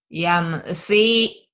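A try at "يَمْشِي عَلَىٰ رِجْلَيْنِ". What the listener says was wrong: Shin. Yamshi ala rijlain.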